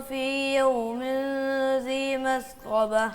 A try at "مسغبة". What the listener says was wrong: سین واضح کریں. مسغبہ.